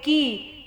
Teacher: کاف زیر کی، کاف کو بھی پتلا پڑھنا ہے، کاف کو موٹا کر کے نہیں پڑھنا، قا نہیں پڑھنا ہے.